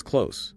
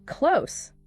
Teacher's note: Pronounced close with an s sound. Rhymes with dose or gross. We live close to the school.